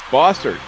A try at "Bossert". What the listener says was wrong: Bossert. You were giving the French pronunciation.